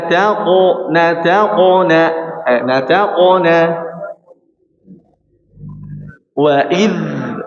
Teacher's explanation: ditahan dulu, dzalnya dialirkan dengan sempurna